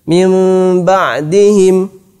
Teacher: Nah, inilah iqlab. Merubah nun menjadi mim apabila bertemu dengan ba. · maka nun sukun ini dirubah menjadi mim. Biasanya dalam mushaf ditulis mim kecil begini.